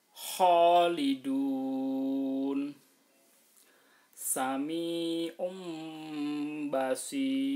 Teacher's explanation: dibaca panjang 6 harokat boleh, dibaca 4 harokat boleh, dibaca 2 harokat juga boleh. Ini namanya mat arid lis sukun.